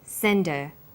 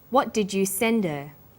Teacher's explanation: Send is the strong form and her is weak. Because her is not stressed, we drop the initial h sound. So it's pronounced sender.